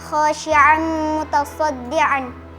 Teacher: hukumnya idgham bi gunnah karena fathatain bertemu dengan huruf mim, dibaca dengung